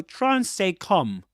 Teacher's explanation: Calm, you don't pronounce the L consonant, you don't say calm, but calm.